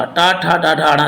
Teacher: टा वर्ग पूरा, टा, ठा, डा, ढा, णा किससे बोले जाते हैं? तो मूर्धा से बोले जाते हैं। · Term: मूर्धन्य